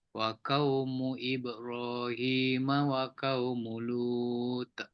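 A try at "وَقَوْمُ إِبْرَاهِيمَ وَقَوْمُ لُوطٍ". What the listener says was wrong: Lut. Lagi lantun. Kalau Lut tak cukup lantun. Lut. Tu tak cukup. Ta ni huruf paling tebal dalam huruf-huruf hijaiyah. Ta. Lut. Macam tu angin saja keluar. Dia tak lantun, tak keluar betul-betul.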